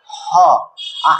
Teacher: আগে গলায় বাধ বাধা প্রাপ্ত হচ্ছে তারপরে হটা বের হচ্ছে এজন্য এটাকে বলা হয় কন্ঠনালীয় ধ্বনি কি বলা হয় কন্ঠনালীয় ধ্বনি কন্ঠনালীয় ধ্বনি ঠিক আছে এবার দেখ র এবার র যখন আমরা উচ্চারণ করছি তখন আমরা কি হচ্ছে জীবটা দেখবি কম্পিত হচ্ছে।